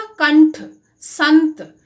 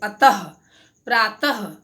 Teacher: अनुस्वार का उच्चारण नाक से किया जाता है और विसर्ग का उच्चारण कंठ से ह की तरह से किया जाता है